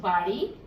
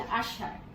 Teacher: আমার জিভের ডগাটা একটু মুচড়ে নিয়ে দাঁতের গোড়া স্পর্শ করতে যাচ্ছি, কিন্তু এর সময়টা এত কম, দ্রুত এর অবস্থার পরিবর্তন হয়ে যায়। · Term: ডয় বিন্দু র